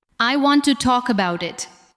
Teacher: Listen to how to and the first part of about become lighter.